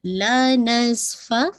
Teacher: فا پہ ہمس واضح ہوگی